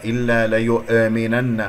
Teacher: لا تسحب ضمة الياء إلى الهمزة فانتبه، ولا تقلقلها